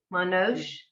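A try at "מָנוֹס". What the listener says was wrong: Not no sh. It's a s. You said it first right, and then you changed it. Not sh. S. Manos.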